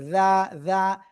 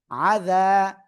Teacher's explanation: জিব্বার আগা উপরে দুই দাঁতের আগায় লাগাবো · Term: জাল